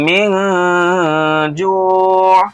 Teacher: نون ساکن کے بعد جیم ہے اس لیے اخفاء حقیقی ہو رہا ہے